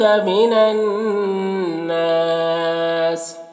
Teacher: نون مشدد ہے تو پیچھے والے متحرک حرف نون سے مل کر پڑھا جائے گا اور نون میں غنہ ہوگا